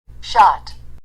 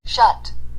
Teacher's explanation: 아 소리하고 어 소리만 다른 것이죠.